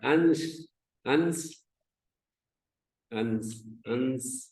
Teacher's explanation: नासिका जो है ज्यादा, नासिका अधिक इन्वॉल्व है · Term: अनुस्वार